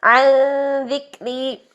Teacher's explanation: عن ذکری، دال کے مخرج پر جا کے، جیسے سا کا مخرج تھا وہی دال کا مخرج ہے. زبان کی نوک اوپر والے سامنے کے دانتوں کناروں سے لگائے، بالکل نوک یوز کریں. عن ذکری، اور پھر یہ باریک حرف ہے.